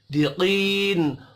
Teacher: قاف حروف مستعلیہ ہے، اس کو بھی پر پڑھیں گے